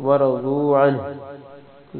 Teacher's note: ضاد کو موٹا پڑھنا ہے